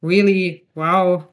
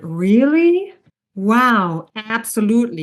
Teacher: we rise and fall really. So it's like an arch, which is above that word. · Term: non-final intonation